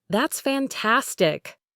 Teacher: try to express excitement with a strong rising falling intonation.